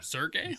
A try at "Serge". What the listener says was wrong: I think Serge there's no I at the end